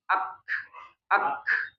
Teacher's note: Nah, kalau kaf yang dimaksud dengan hasznya itu bunyi khnya. Ak ak khnya itu enggak ada getaran di pita suara ya